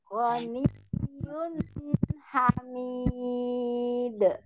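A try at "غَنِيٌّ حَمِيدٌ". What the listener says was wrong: Jadi, ketika Umi tadi barusan sudah munyong yunya, tapi nunnya tidak dikembalikan. Jadi Waniyun, begitu ya. Waniyun, nah ketika nun sukun Jangan telat. Tidak Waniyun berbalik ya, jangan telat. Waniyun Kapan dia fathah dibuka a, kapan dia kasroh dan belakang bawahnya i, kapan dia dhammah dimunculkan u, kapan dia sukun kembali ke perutnya pun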